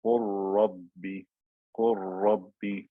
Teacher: So it becomes a one ra with shadda. · The lam has completely disappeared because I converted it into a ra